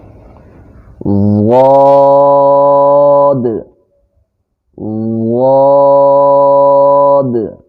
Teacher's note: اس کو ادا کرتے وقت زبان کی کروٹ جو ہے وہ بائیں طرف اور دائیں طرف لگتی ہے۔ بائیں طرف آسانی سے اور دائیں طرف مشکل سے لگتی ہے، اور بیک ایک وقت جو ہے دونوں کو زبان کی کروٹوں کو لگا کر پڑھنا مشکل ہے۔